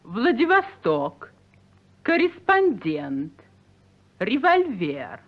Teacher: Now for unstressed O and A. These are thrown away, pronounced very casually and quickly, as in Vladivostok, correspondent, revolver.